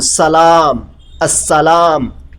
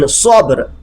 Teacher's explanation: Sin is a soft, like we say in Salam, As-Salam, while Sad is heavy, like in Sabr.